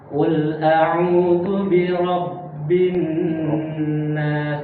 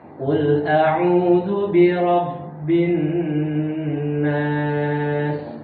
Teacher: Maka ketika dia bertasydid, jadi dia suaranya itu seakan-akan terpotong. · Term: ba bertasydid